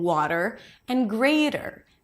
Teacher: instead of bringing the tongue down after the flap t, you want to pull it in immediately for the American R. For the American R, the tongue pulls back and the sides of the tongue touch the sides of the upper teeth.